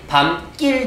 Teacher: 그래서 발음이 밤길 되는 거예요. 길 발음할 때는 낄이 되는 거예요. · 울림소리와 안울림소리가 합쳐져서 뒤에 있는 안울림소리가 뭐로 바뀌는 거? 된소리로 바뀌는 걸 우리는 예사소리의 된소리화라고 해요.